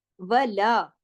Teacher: واو ایک حرکت پڑھا جائے گا، لا 2 حرکات، ولا، اس کو واو اور لا کے فرق کو آپ نے اپنے چیک کرنا ہے کہ آپ کا وا اور لا دونوں الگ الگ پڑھے جا رہے ہیں نا، ولا، لا کے ساتھ تو الف ہے، واو کے ساتھ نہیں ہے، یہ دھیان سے پڑھنا ہے۔